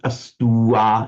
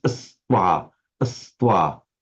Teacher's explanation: So here we've got this letter v, which represents the final full vocalic u becoming a v by sandhi. And it doesn't make a fresh syllable. It's not astua, it's astwa, astwa.